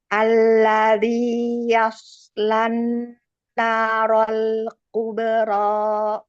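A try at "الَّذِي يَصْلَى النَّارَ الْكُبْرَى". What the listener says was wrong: Nah, roknya kepanjangan Bu dan masih ada hamzahnya. Sama ini Bu, perlu ditebalkan sedikit. Kubro, yauslan, naro, naro, ro.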